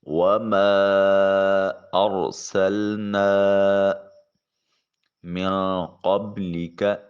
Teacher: وَمَا أَرْسَلْنَا مِن قَبْلِكَ، نون ساکن کے بعد قوف حرف اخفا ہے، نون کو اپنے مخرج میں چھپا کر ادا کریں گے۔ با ساکن ہے اور یہاں قلقلہ واجب ہوگا۔